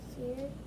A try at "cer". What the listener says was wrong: Not seer. There's only one E. 2 E's is what makes the long E sound. 1 E just makes the short E sound. So what's the short E sound? S-E-R. How would you say it? Not long E, so it wouldn't be seer.